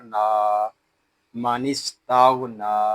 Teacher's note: یہاں نون کو ہم ایک الف تک کھینچ کر پڑھیں گے کیونکہ یہاں کھڑا زبر ہے اور کھڑے زبر کو ایک الف تک کھینچ کر پڑھتے ہیں.